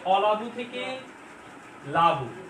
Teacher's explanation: সামনের থেকে অ হাওয়া হয়ে গেল, বাদ গেল। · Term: আদি সরলোপ